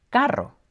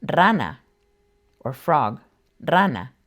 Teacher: If you add another R to this word, it changes the meaning completely and becomes carro, meaning car. This rolled R is called a trill, and while it's not the easiest sound to achieve since we don't have it in English, it's not impossible.